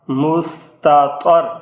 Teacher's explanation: اب اس میں یہ تا باریک پڑا جائے گا اور یہ طا اور یہ را دونوں پر پڑے جائیں گے